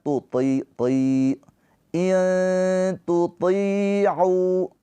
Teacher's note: Ditahan 2 harokat. Tuti'u, to ini huruf tebal. Jadi walaupun ketika kasroh, dia tetap dipertahankan tebalnya. Karena kalau nggak ditebalkan, dia ketukar nanti huruf ta.